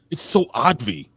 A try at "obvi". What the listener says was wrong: No, it's obvi with a B. You sound like you said oddvi.